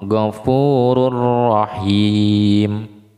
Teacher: mil nun mati bertemu dengan lam, maka tanpa dengung. Ada lagi tanwin bertemu dengan ro, ghafurur rahim. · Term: idgham bila guna